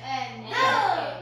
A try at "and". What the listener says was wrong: 아니, 뒤에 약하게 하세요. and. 자, and. 드는 조금만 하게 해요.